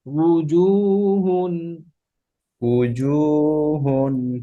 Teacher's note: হামজা হয়ে যায় না ঠোঁট থেকে, উ, ঠোঁট গোল করে উ